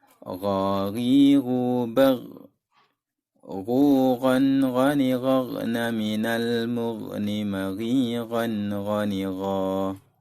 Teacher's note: Makhraj huruf gha adalah tenggorokan bagian atas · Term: huruf ghain